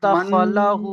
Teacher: নাকে তুলে একালিফ পরিমাণ গণনা করে পড়তে হয়।